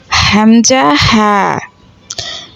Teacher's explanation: ১ নম্বর মাখরাজ, হলকের শুরু হইতে হামজা হা